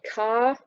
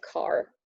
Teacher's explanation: in terms of phonology we have a rhotic accent here so R is pronounced in all positions